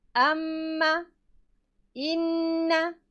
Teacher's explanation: al-khayshum ialah makhraj yang keluar daripada hidung, ya. Dari makhraj ini keluar huruf gunnah, iaitu mim sabdu dan juga nun sabdu